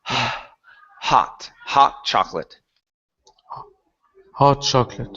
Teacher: Okay, make sure to pronounce that H. The H is not coming out. So it sounds like you're saying hot chocolate.